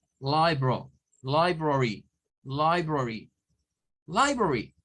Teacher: Es una sílaba que lleva más fuerza de voz. Entonces, li se tiene que decir con fuerza. Luego, bro, y library. · Entonces resulta que li es una sílaba tónica.